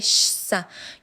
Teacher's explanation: You should feel no vibration. This is a voiceless sound.